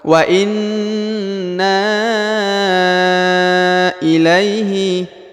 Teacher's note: Huruf La diayun sekali dengan lembut karena di depannya terdapat ya sukun.